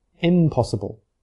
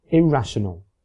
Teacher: because it is difficult to say in before words that do not begin with an alveolar sound the in has changed to match the first sound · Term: assimilation